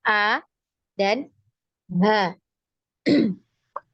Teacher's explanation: huruf yang keluar ya dari aqsal halqi ini ada 2 huruf ya. Huruf pertama adalah hamzah dan huruf yang kedua itu adalah huruf ha ya.